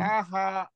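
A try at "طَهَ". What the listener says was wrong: Toha. Sunda mah Taha, ini mah Toha. Toha, Patoha.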